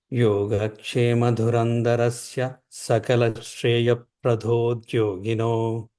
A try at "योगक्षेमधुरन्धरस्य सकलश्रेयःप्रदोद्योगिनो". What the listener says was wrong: Yeah, just one thing. Try not to say pradhodyogino. Try to say pradodyogino. Just try not to say pradhodyogino, like prado.